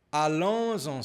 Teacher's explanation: aqui nós temos a ligação com som de Z